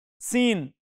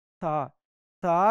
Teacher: सीन में जुबान पीछे समेट लेते हैं और था में जुबान आगे फैला देते हैं